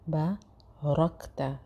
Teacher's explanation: را موٹا ہوگا اور کاف سے مل رہا ہے